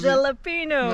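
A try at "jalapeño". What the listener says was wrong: Non, c'est pas un G.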